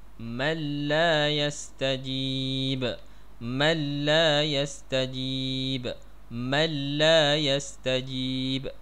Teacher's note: Huruf-huruf idgham bila gunnah ada 2 saja, iaitu lam dan juga ra. Bila nun mati ataupun tanwin bertemu dengan lam ataupun ra, maka dia idgham bunyi nun mati ataupun tanwin itu tadi ke dalam huruf 2 ni tanpa dengung. Kita tidak boleh bunyi dengung. · Bunyi nun tu macam tak ada langsung dah. Dia dah masuk dah ke dalam huruf lam selepas daripada nun ni.